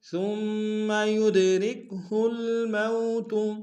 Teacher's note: کاف کو باریک ادا کریں گے